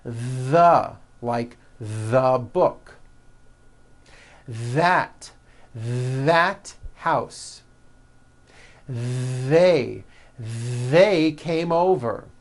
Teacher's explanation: You should be able to feel a strong vibration in your throat and on your tongue. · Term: voiced TH